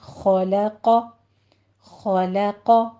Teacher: خو کو پر پڑھنا ہے، لام باریک ہے، قوف کو پر پڑھنا ہے